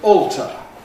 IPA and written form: ˈɔːltə (alter)